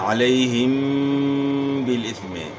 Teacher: और हा पढ़नी है, इम नहीं पढ़ना, अलैहिम। तो मीम साकिन के बाद बा है, तो यहाँ आपने जो है गुन्ना करना है, अलैहिम बिल इस्म, यहाँ जो है ना इख्फा होगा, इख्फाए शफवी, अलैहिम बिल इस्म।